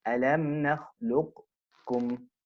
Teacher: the qaf is blended into the kaf completely. This is a complete idgham and is preferred.